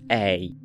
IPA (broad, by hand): ɛi̯